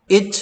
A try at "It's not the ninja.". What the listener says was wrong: 아니 선생님이 TS가 무슨 발음 하는지 다 가르쳐 줬지 않냐? 그럼 왜 자꾸 it net the ninja라 그래? it net the ninja야? it net the ninja야?